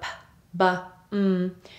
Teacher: These are the sounds where you use your lips mostly together in order to produce the sound. So p, b, would be bilabial sounds where you actually put your lips together.